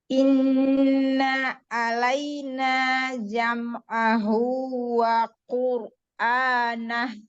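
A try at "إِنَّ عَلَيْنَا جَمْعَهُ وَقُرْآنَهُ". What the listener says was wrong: Nah, ke ain jangan ada jeda. Sempurnakan lagi sifatul huruf pada huruf mim sukun. Ya, pada huruf mim yang sukun itu setingkat gunnah naqisah. Ya, tidak sempurna, kurang sempurna. Tetapi tetap ada gunnahnya. Jadi jangan ngerem. Jam'ahu. Jadi adanya. Jam'ahu. Jadi jangan berhenti, jangan jam'ahu. Kasih bainiyah pada huruf mim sukunnya. Lalu ro juga. Ro sukun itu ro kan punya sifat takrir.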